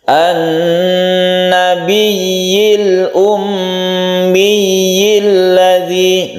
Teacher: Jadi kita tahan dulu gunnahnya, kemudian kita tasydid ya-nya. Tasydid ya itu langsung ke ya-nya kita tekan.